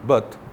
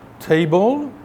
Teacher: Et il y a le te non aspiré et le te aspiré.